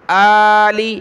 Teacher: ایک الف کی لمٹ میں کھینچیں گے کھڑا زبر کو